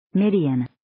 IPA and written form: 'mɪdiːən (Midian)